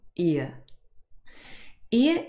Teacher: ear is a double vowel sound that means it's a combination of two individual vowel sounds in this case I and uh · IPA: /ɪə/